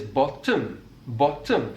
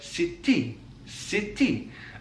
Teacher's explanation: a feature that can be found in south wales is the doubling or extension of a consonant sound that comes between two vowel sounds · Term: doubling of that consonant sound